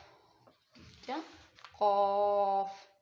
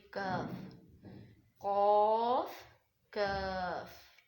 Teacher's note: जुबान की जड़ जो है कवे के करीब जब नर्म तालू से लगे तो क अदा होता है